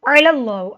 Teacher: आइन हलक के दरमियान हिस्से से अदा होगा। अल्लाह कलाम को मोटा पड़ा, अल्लाह कलाम से पहले ज़बर है, अल्लाह कलाम पे खड़ी ज़बर है, एक अलिफ के बराबर लंबा होगा।